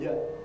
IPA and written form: jə (‘you’)